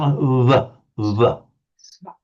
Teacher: it's both lips slightly touching, not a b, but just air slightly, almost touching